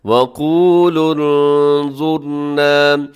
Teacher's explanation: آگے وقولوا انظرنا، یہاں پر وقولوا انظرنا، یہاں نون ساکن کے بعد ضا ہے تو آپ نے یہاں پر کیا کرنا ہے، اخفا کر دینا ہے